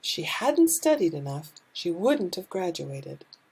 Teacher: we are going to have a stress on a negative and a stress on the main verb